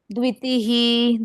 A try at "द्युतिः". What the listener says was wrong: द्वि नहीं, द्यू, D बाय यू, द्यू। द्य है, आधे द के साथ यू, द्यू, डी बाय यू।